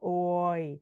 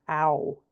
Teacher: Your mouth does two things. So there's a glide between two sounds. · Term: diphthong